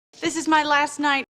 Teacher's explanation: the t is not between two consonants it's after the i diphthong before a consonant that's why this t is a stop t